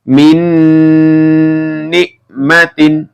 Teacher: ada nun sukun bertemu dengan nun ya, maka ini dibaca masuk dengan mendengung.